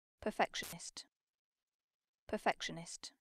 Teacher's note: so it's a tiny difference but the n sound is gone it is replaced with noise